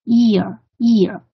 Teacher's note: 舌尖抵着下齿龈，然后声音是在后部出来的